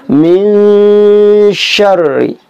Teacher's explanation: Ikhfa itu artinya samar. Jadi bunyi nun mati itu disamarkan dengan huruf berikutnya.